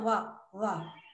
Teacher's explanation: थोड़ा सा दांत और ओठ से छुआ जा रहा है, वाह छू रही थी जीवा, तो इसलिए दंत ओष्ठ करते हैं इसे, दांत और ओठों को छू कर आवाज बाहर निकल रही है।